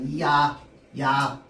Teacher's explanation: 이중모음은 발음할 때 입술 모양과 혀의 위치가 변하기 때문에 야 소리는 잠깐만 나고 그 뒤에는 계속 아 소리만 난다고 했습니다.